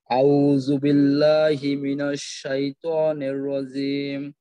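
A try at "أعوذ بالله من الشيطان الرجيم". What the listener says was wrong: প্রথমে তো আউ, আইনটাকে আরেকটু চাপ দিয়ে উচ্চারণ করবেন, আর প্রত্যেকটা জজম তাসদিদে আরেকটু স্থিরতার সাথে, একটু সময় দিয়ে দিয়ে, যেমন আউযু বিল্লাহি মিনাশ শাইতানির রাজিম। তো আপনি যতটুকু সময় নিতেছেন এই অংশটার জন্য আরেকটু লম্বা সময় নেন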